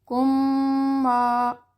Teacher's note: رَزَقْنَاهُمْ، یہ دیکھیے ہم میں میم ساکن تھا، پھر من الطیبات میں میم زیر والا ہے، متحرک ہے، تو یہ دونوں میم مل کر مشدد میم میں تبدیل ہو گئے